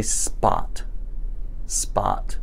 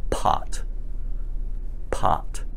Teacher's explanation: you feel a puff of air again but it's much weaker than it was in the case of pot